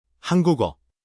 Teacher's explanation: the final consonant slides over and becomes the first sound of that next block. The empty just gets filled in. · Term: linking